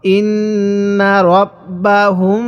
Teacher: মিম সাকিনের পরে যদি এরকম বা থাকে তাহলে ওই মিম সাকিনটা অবশ্যই গুন্নাহ করে পড়তে হবে